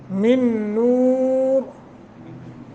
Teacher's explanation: نون مشدد ہے یرملون کا قاعدہ لگا ہے غنہ کریں گے